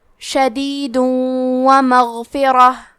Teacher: واو حروف الادغام بغنہ میں سے ہے تو ہم یہ حکم کو غنہ اور تشدید کے ساتھ ادا کریں گے